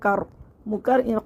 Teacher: قر نہیں کرنا ہے، اس کو کر ہے، کاف کو باریک کرنا ہے